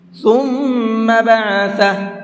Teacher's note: ثم، اس میم کے اندر غنہ کریں گے، یعنی آواز کو ناک میں روک کر کے پڑھیں گے، اور زیادہ نہیں روکنا ہے، صرف ایک الف کے برابر کرنا ہے۔ بعثہ، جب یہاں پر وقف کریں گے تو ہا کو ساکن کر دیں گے، الٹا پیش نہیں پڑھا جائے گا